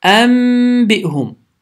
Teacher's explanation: Fikir verin yəni N səsinə çevrilir. N səsi M səsinə çevrilir. Səs burundan çıxır və iki saniyə miqdarında uzadılır.